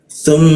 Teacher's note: Kita tahan dua ketukan di mim bertasdid.